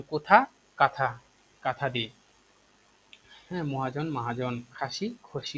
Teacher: অর্থাৎ যেখানে অ আছে ওখানে আ হয়ে যায়, আর যেখানে আ আছে সেখানে অয়ে পরিণত হয়ে যায়।